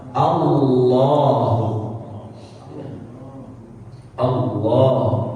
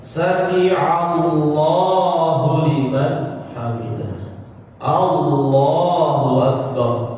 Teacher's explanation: Ini kan di sini enggak ada tanda dua harakatnya kan ya. Tapi dia tidak boleh dibaca pendek Allah ya harus dipanjangkan lamnya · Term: lafzul jalalah